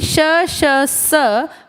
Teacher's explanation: श स महाप्राण है और अघोष हैं।